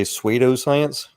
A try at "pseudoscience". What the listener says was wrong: It's pseudoscience. The P is silent. Pseudo.